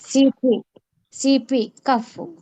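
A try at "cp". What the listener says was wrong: కప్. సి అన్నప్పుడు ప ప కప్. ఎఫ్ అన్నప్పుడు కఫ్. గుర్తుపెట్టుకో.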